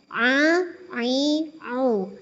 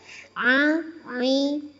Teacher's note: dalam mengucapkan huruf ain ini seperti ada sengau-sengaunya ya